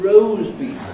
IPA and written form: ˈrəʊz ˋbiːf (roast beef)